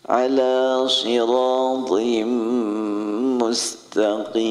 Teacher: Jadi shad jangan sampai sama dengan sin. Shad memiliki sifat isti'ala dan itbaq. Isti'ala naik, itbaq sampai menyentuh gusi. As-sirat, jangan sampai sama dengan sin.